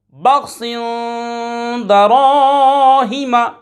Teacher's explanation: خا حرف مصالیہ میں سے ہے، پر یعنی موٹا پڑھیں گے ہمیشہ